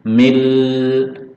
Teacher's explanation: Tapi kita lihat di sini dulu, ada nun sukun bertemu lam, masuk mil, jadi langsung bunyinya ganti lam, lebur ke lam tanpa dengung. Milladunka, lalu dunka, ini nun sukun bertemu kah, namanya ikhfa hakiki, disamarkan, tahan dengung.